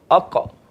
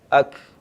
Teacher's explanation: Sifat dia tak melantun. Qaf melantun. Walaupun dia berhampiran tapi dia tak sama sifat. · Qaf ni, dia berbeza dengan kaf. Qaf ni dia ada sifat dia qalqalah. Qalqalah apa? Dia melantun. Kaf kita sebut dia tak melantun kan.